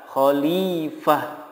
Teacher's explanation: Kemudian yang terakhir, apabila huruf terakhirnya adalah tak marbutoh, apapun harokatnya, baik itu fathah, kasroh, domah ataupun tanwin, cara mewakofkannya adalah mensukunkannya, kemudian menggantinya menjadi ha, disukunkan dan diganti menjadi huruf ha